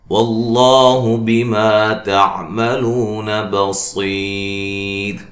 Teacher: نون تنوین کا ادغام ہوگا مع الغنہ، واللہ بما تعملون بصیر، لفظ اللہ کو موٹا ادا کرنا ہے، اس سے پہلے حرف پر زبر ہے ، بما، ما الف مدہ ہے، تعملو، لو واو مدہ ہے،